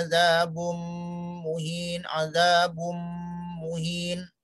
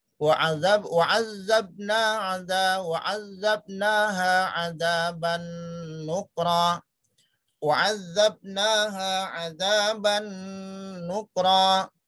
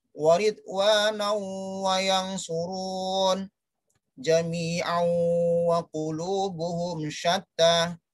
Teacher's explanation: Tidak terdengar lagi yang namanya tanwin atau nun, tapi yang terdengar adalah huruf-huruf berikutnya. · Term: idgham bi gunnah